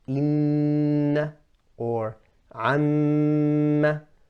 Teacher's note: These are examples with a noon or a meme with a shaddah. That's the longest Ghunnah.